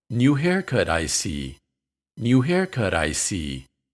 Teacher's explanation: in these examples I see is pronounced in a low tone